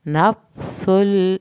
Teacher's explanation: नफ्सुल, फा को नहीं हिलाना, सीन को सीटी की आवाज़ के साथ पढ़ना है